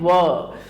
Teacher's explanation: दंतोष्ठ यानी ऊपरी दांत और निचले होठ से